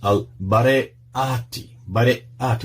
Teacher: Bareyati, with the glottal stop there